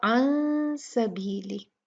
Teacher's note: नून साकिन, उसके बाद सीन है, तो यहाँ पर भी इख्फा होगा, लेकिन ये इख्फा लाइट होगा, बारीक होगा